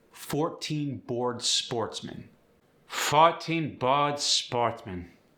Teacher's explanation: The or sound is another fun one. You'll hear a couple variations. Or might go to aw or oa.